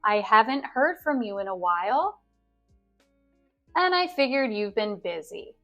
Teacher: The intonation falls at the end of the sentence. Also, the and aligns with the I here.